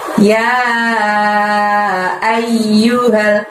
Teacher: ya di sana harus dibaca 5 ya panjangnya ya